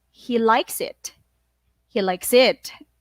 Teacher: when you repeat the information, you are going to be rising up the word likes